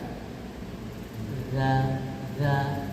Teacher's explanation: dia bukan huruf qqalah huruf Zal hampir mirip dengan huruf ta ujung lidah bertemu dengan ujung gigi seri atas